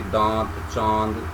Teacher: इसमें हल्का सा नाक से ध्वनि निकलती है, इसे चंद्र बिंदु कहते हैं।